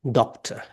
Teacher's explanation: we have to stress the syllable doc